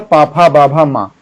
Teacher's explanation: पा वर्ग मतलब पाफा, बाभा, मा, ये सभी कहां से उच्चरित होते हैं दोस्तों, ओष्ठ से उच्चरित होते हैं।